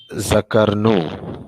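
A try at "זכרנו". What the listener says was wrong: Super, Father. Zakarnu. Very good. Super.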